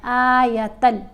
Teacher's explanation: لام کے اوپر ہم نے غنہ نہیں کرنا، تل نہیں پڑھنا، بلکہ اس کو جلدی سے پڑھنا ہے